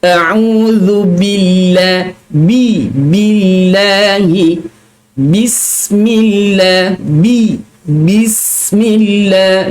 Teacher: huruf ba ini adalah huruf yang nipis, bukan huruf yang tebal secara keseluruhannya. Sebab itu bila mana kita menyebut huruf ba di dalam mana-mana ayat, di dalam mana-mana kalimah yang kita baca, iaitu dalam Al-Quran yang kita baca, dia tetap ba, bi, bu.